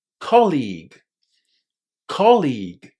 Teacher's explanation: The stress in this word falls on the first syllable.